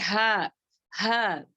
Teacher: हलक से बगैर रगड़े खाए